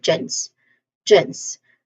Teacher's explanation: we say it as gens with a letter J sound and a short E sound and ending with a hissing sound S.